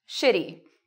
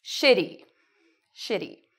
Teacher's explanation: When we say it, the TY almost becomes like a DY sound. And shit is longer and louder.